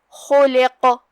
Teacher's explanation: آخری میں قاف حروف التفخیم میں سے ہے تو ہم قاف کو تفخیم سے پڑھیں گے. تو خا کو تفخیم سے اور لام کو ترقیق سے، آخری میں قاف کو پھر سے تفخیم سے